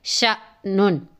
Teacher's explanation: جس الف کے اوپر جزم ہوتی ہے وہ حمزہ ساکنہ ہوتا ہے اور اس کو جھٹکے سے پڑھتے ہیں.